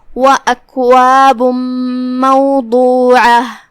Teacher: کلمت اکواب میں یہاں بھی با پہ تنوین پیش ہے اور اس کے بعد حرف المیم ہے، یہاں حکم ہوا ادغام بغنہ، تو ہم یہ تنوین کو میم میں داخل کر کے غنہ کے ساتھ اور تشدید کے ساتھ یہ حکم کو ادا کریں گے